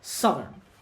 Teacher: Digraph OU can be both tense and lax, and the tense form of OU is pronounced as strut